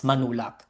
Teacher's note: the velar sound in the prefix and the initial consonant becomes one sound or one letter, N in the case of manulak. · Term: Nasal substitution